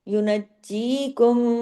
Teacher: میم مشدد ہے آگے تو غنہ ہوگا بڑا، ادغام ہو رہا ہے